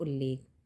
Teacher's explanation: त के बाद यदि ला हो तो त ल में बदल जाता है